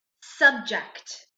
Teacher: Sometimes it's a little hard to hear the t when we say the word subject, but it's there. It's very quiet. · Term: kt sound